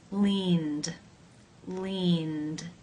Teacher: The final sound of the verb in infinitive form is the n consonant sound. This is a voiced consonant. Therefore, it is case 2, where the ed is pronounced as the d sound.